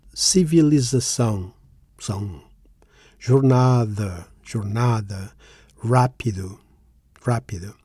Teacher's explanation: The stressed syllables are são, na, ra. In that last word, notice the graphical accent.